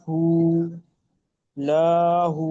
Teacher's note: উল্টা পেশ ও মাদ্দা সমতুল্য সুতরাং ও মাদ্দার মত এক কালি পরিমাণ টান দিয়ে পড়তে